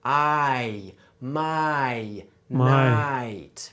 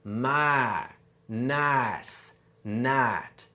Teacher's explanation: So in standard English, there's what we call a diphthong in words like my, nice, and night. Can you hear how that I sound is actually 2 sounds pushed together?